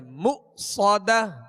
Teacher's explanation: یہاں حمزہ ساکن ہے، اس کو جھٹکے سے ادا کریں گے مؤصدہ. صاد کو سیٹی کی آواز میں اور پر پڑھیں گے